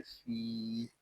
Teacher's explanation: تس، میم زبر ما، تس ما، عین پیش عو، لا تسمعو، فا یا زیر فی، یہاں یا مدہ ہو رہا ہے، فا کو ہم ایک الف تک کھینچ کر پڑھیں گے۔